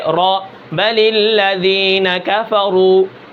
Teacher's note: نہ را کے اندر زیادہ شدت یعنی سختی ہوتی ہے، نہ رخوت یعنی زیادہ نرمی ہوتی ہے، درمیانی حالت کے اندر ہوتا ہے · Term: توسط